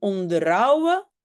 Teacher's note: Et on avait déjà dit aussi, et je pense que c'était la semaine passée, que le H, on ne le prononce pas en tussentaal